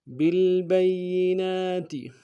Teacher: لام کے ساتھ ملانا ہے، لام ساکن غنہ نہیں ہوگا، اور با کو یا کے ساتھ ملانا ہے، یا کے اوپر تشدید زور دیں گے